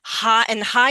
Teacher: high is very easy to lengthen because of that long i sound